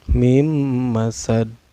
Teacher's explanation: Kayak ini dihukumi qalqalah kubro. Cara bacanya dipantulkan ya dan pantulannya besar